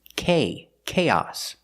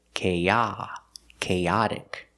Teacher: with chaos the stress is on the first syllable on the a sound K chaos but with chaotic the stress is on the second syllable